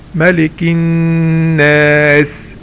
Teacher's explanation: لو انا بقرأ لقيت حرف ميم او نون عليهم شدة، هنا بعمل حاجة اسمها بمد حركتين. الحركتين يعني مقدار قبض الاصبع، يعني لما تجيب كده اصبعك كده تقفله وتفتحه، قبض وبسط الاصبع. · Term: الغنة